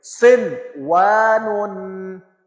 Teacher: نون کو علیحدہ واو کو علیحدہ، نون کو واو پہ مکس نہیں کریں گے، ادغام نہیں کریں گے